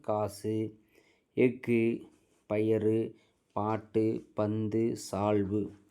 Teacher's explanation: தனக்குரிய ஒரு மாத்திரை அளவிலிருந்து குறைந்து அரை மாத்திரை அளவை ஒலிக்கிறது இவ்வாறு தனக்குரிய ஓசையில் குறைந்து ஒலிக்கக்கூடிய உகரம் குறுகிய உகரம் குறுமை கூட்டல் இயல் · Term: குற்றியல் உகரம்